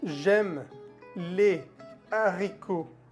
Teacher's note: la liaison es prohibida cuando la H es aspirada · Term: H aspirada